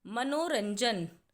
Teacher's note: मनोरंजन में र के बाद न की आवाज़ है